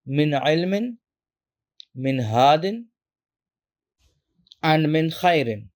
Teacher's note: Now you can think of it as a very clear break between the noon or the tanween sound and the next letter. There is no blending, no nasal sound.